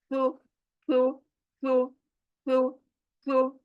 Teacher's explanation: जबान चौड़ी होकर ऊपर के दांतों को जाकर लगेगी, तब जाकर ये अदा होगा।